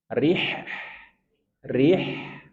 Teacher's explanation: ha dari tengah tenggorokan dan dia punya sifat rakaah Rih.